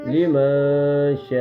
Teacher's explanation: اس کو 4 الف یعنی 4 سیکنڈ یا 5 سیکنڈ کے برابر کھینچیں گے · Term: بڑی مد